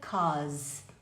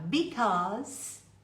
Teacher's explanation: o because às vezes ou muitas vezes nas músicas na linguagem informal vira cós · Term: contração